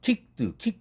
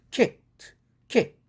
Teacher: 드라는 철자에 대한 발음인데, 앞에 크가 무성음이니까 똑같이 무성음으로 바꿔줘야 됩니다. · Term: 무성동화